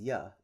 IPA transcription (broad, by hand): j